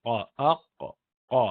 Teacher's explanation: تو زبان کی جو جڑ ہے حلق سے اوپر، تو وہ جڑ اوپر کی طرف اس کا جو حصہ ہے اس سے قاف نکلتا ہے